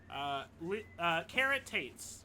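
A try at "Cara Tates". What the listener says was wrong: think you're saying carrot. Carrot.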